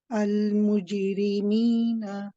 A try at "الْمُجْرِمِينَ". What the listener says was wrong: That's it, Barakallahu feek, much better.